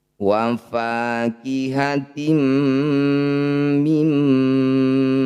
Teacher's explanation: Cara bacanya bunyi kasrah tanwin masukkan pada mim dengungkan 2 harokat. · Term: idgham bi gunnah